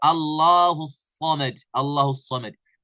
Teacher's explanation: ላሙ يعني ግልጽ ተደርጎ አይነበብም እና ሳምን ተደርጎ ይነበባል ኢድጋም ተደርጎ ነው የሚነበበው